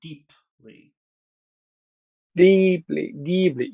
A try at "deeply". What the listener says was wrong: Yeah, but the P is a p p p. Deep, deep. Gotta pronounce the P. Pronounce the P. Deeply.